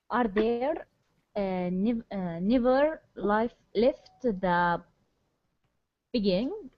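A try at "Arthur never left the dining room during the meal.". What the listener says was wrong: No, this is dining. This is that's a D.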